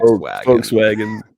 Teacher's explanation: I always pronounce it with an F, like instead of a V